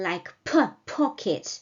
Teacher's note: I know that in Urdu and in English, this consonant comes with much aspiration, like P, pocket.